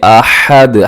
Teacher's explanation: اسے آحد نہیں پڑھنا بلکہ احد، ہا کا خیال رکھیے گا. اور آخر میں دال کو آپ نے ہلانا ہے، اس کی آواز کو ڈبل کرنا ہے کیونکہ وہ حروف قلقلہ میں شامل ہے.